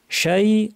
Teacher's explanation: শিনকে জিহ্বার মাঝখান থেকে উচ্চারণ করতে হবে আওয়াজটা অনেকটা ছড়িয়ে পড়বে